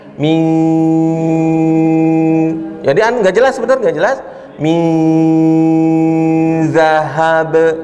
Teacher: Mi, yang benar antara n dan z nggak jelas, samar tadi. Mi, bukan ming, bukan ming, bukan ming, tapi mi, nggak ada g-nya.